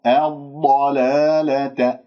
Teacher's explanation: الضلالة، لدينا ضاد مشددة، ضاد ساكنة مفخمة مرتبة رابعة، رخوة واستطالة، وأسمع صوت رخوة يعني يجري فيها الصوت، يجب أن أعطيها حقها، الضاد الساكنة لازم أسمعها.